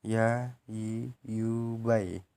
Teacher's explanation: Selanjutnya yang terakhir yaitu huruf ya. Melafalkan huruf ya keluar dari tengah lisan disentuhkan dengan langit-langit